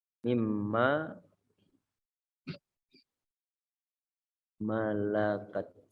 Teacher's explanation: Nah, kita perhatikan dari lafaz minma, nunnya sukun, setelah dimasukkan nunnya ke dalam huruf mim, maka menjadi mim satu yang bertasydid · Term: idgham